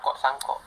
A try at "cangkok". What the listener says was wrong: Bukan sangkok setan, cangkok.